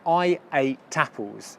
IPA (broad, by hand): eɪ. ˈta. p(ə)lz